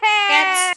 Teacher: karena huruf T-nya voiceless. Berarti final S-nya tetap sama. S.